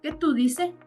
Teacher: Tú como sujeto pronominal más dice, donde en este verbo se elimina o se suprime la S.